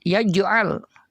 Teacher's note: Kemudian pada ayat yang kedua, alam yaj'al ada mim sukun bertemu dengan ya, maka itu hukum bacaannya adalah idhar syafawi. Kemudian ada huruf jim yang disukun, yaj'al dibaca mantul, itu hukum bacaannya adalah qalqalah, karena di tengah kalimat maka disebut dengan qalqalah sughra.